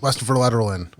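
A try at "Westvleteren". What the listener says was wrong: See, you had like a little pause at the start. You were almost there.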